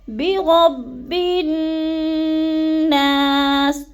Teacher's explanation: تو غنّے پہ تھوڑا سا رکنا ہے، برب الناس، اور نا کو تھوڑا سا لمبا کر جانا ہے کیونکہ ادھر الف مدہ ہے۔